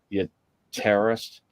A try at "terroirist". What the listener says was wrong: Terroirist. Terroirist, not a terrorist.